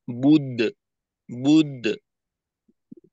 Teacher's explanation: আর কলকলার সময় অবশ্যই আমাদের ঠোঁট খোলা থাকবে, বায়ের পেশের প্রভাব যেন কলকলায় না পড়ে। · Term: মধ্যম কলকলা